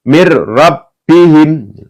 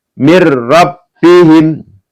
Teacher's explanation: ketika ada nun sukun atau tanwin bertemu dengan huruf ra maka dibaca masuk ya dengan tidak mendengung.